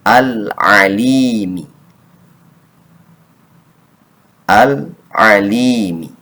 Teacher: yang dibacanya harus diizharkan, dijelaskan, sehingga alnya terdengar jelas dan tidak boleh mental, tidak boleh mantul-mantul. Dia bersih.